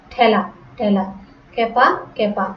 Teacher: একার যুক্ত একাক্ষর ধাতুর সঙ্গে আ প্রত্যয় যুক্ত হলে সাধারণত একারে উচ্চারণ আ হয়ে যায়, হয়ে থাকে।